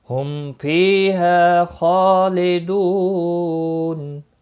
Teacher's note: ہم میم ساکن کے بعد پھا آیا ہے، اظہاری شفوی ہوگا